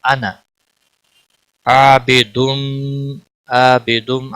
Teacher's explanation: عابدم الف مدہ ہے 1 الف کے برابر کھینچ کر پڑھیں گے